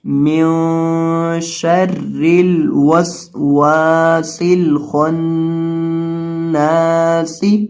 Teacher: سین کے اندر سیٹی کی آواز پیدا کریں گے۔ سین 3 دفعہ آئی ہے، ایک یہ سین ہے، ایک یہ سین ہے، ایک یہ سین ہے، تو ان تینوں سینوں کے اندر آپ نے سیٹی کی آواز پیدا کرنی ہے، من شر الوسواس الخناس۔